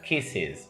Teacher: Fíjate que no digo kiss y añado otra S, sino que tengo que ayudar a la S porque termina en un sonido que dificulta la pronunciación de la S. En esos casos tienes que añadir una sílaba más, tienes que añadir is